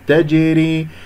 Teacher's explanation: الجيم مقلقلة قلقلة صغرى في وسط الكلام